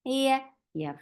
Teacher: You are lifting your tongue up towards your palate, but you're not touching it, which is making ya very soft letter.